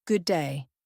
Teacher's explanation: The D sounds merge making it good day. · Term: consonant to consonant